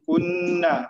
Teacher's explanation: Nun bersabdu ataupun nun musyaddad, nun tasydid, wajibul ghunnah dengung dua harakat